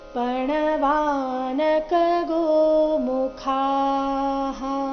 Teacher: ಇಲ್ಲಿ ಕೊನೆಗೆ ಖಾ ಮಹಾಪ್ರಾಣ ದೀರ್ಘ ಹೇಳಿದ ನಂತರ ವಿಸರ್ಗದ ಉಚ್ಚಾರಣೆ ಹಾ ಎಂದು ಹೇಳಬೇಕು.